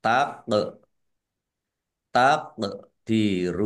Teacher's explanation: bacaan qalqalah dibaca memantul ditampakkan pantulannya